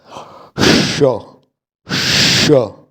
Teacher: यानी जो हमारा स है, दंत्य स जो है, एक हमारा तालव्य श, जिसमें जीभ जो है तालु में जाके लगती है, पूरी तरह से नहीं लगती लेकिन थोड़ी लगती है। इसी तरह एक जीभ को अंदर मोड़ कर गले में ले जाई जाती है, जीभ मूर्धा पे लगाई जाती है ऊपर, तालु के पीछे वाला हिस्सा अंदर गले की तरफ, उसको मूर्धा बोलते हैं।